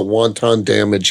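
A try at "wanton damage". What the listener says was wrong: It's not pronounced like the Chinese food.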